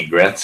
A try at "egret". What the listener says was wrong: You call it an egret. Okay, it sounds like you're pronouncing it like they would say it in Israel. It's an egret. E, not an I. Egret.